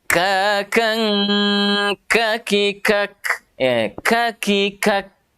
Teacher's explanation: Harus ada lepasan nafas dulu ketika kita ada mendapatkan kaf yang sukun. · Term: huruf kaf